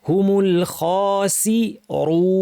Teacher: খেয়াল রাখতে হবে খটা ভারী এবং খ এর আওয়াজটা সফট হবে খ ভারী মানে আওয়াজটাকে জিহ্বা দিয়ে উপরে ঠেলতে হবে